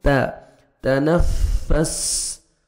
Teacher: تا کو باریک پڑھیں گے تاکہ طا میں ساؤنڈ مکس نہ ہو